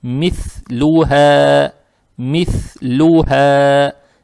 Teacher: Теперь буква ха, она произносится на выдохе, мягко. И эту фатху тянем два раза, тянем за счет алифа без огласовок.